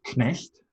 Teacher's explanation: German keeps the k sounding before the n.